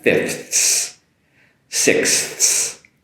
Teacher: I'm making that proper TH and the proper S that follows